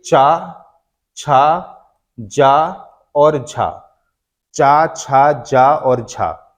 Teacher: उच्चारण स्थान एक दूसरे का स्पर्श कर रहे हैं एकदम से अलग नहीं हो रहे लेकिन अलग होते टाइम पर उनके बीच में एक संघर्ष होता है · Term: स्पर्श संघर्षी व्यंजन